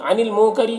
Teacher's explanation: عن المنکری یہاں پر نون میں اخفاء ہوگا، نون کے آواز کو ناک میں چھپا کر پڑھیں گے اور را کے نیچے زیر ہے تو را کو باریک پڑھیں گے